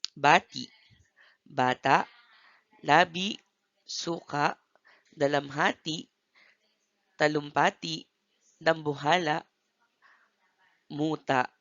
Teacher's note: Ito ay binibigkas ng banayad, subalit may impit o glottal stop sa huling pantig ng salita at nilalagyan ito ng tuldik na paiwa.